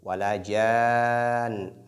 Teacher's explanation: On doit tirer beaucoup le jim, c'est madou lazim.